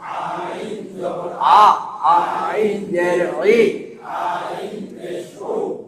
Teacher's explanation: আইন হলকের মাঝখান থেকে গলায় চিপে আদায় হবে।